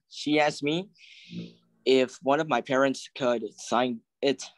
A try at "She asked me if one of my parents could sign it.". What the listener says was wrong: Yeah, sign it. Sign it. Yeah, there's not like a pause. Sign it. Sign it. Together.